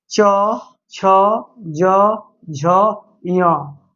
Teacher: च वर्ग का उच्चारण स्थान जो है तालव्य होता है